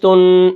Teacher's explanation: اور تا دو پیش تن، یہ جو ناک میں آواز جا رہی ہے یہ اس کو نون تنوین کہتے ہیں. اور تنوین کو جب ہم پڑھتے ہیں تو اس میں غنہ ضروری ہے، اور غنہ کہتے ہیں ناک میں آواز لے جانے کو، اور غنے کا جو مطلب ہے وہ ہے گنگنانا، ٹھیک ہے.